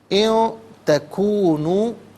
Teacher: ربکم اعلم بما فی نفوسکم ان تکونوا، ان میں نون ساکن ہے، نون ساکن کے بعد تکونو میں تا آ رہا ہے، حرف اخفا ہے، تو نون ساکن کو اخفا کے ساتھ پڑھا جائے گا، یعنی اخفا کہتے ہیں ناک میں آواز لے جا کر گنگنانا